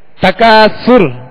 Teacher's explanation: تکاثر میں جب را ہم نے ساکن کی تو را کو ہم نے پر پڑھا